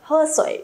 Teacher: miền Nam Trung Quốc hoặc là các bạn Đài Loan chẳng hạn, sẽ phát âm âm này là âm hờ rõ hơn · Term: phương ngữ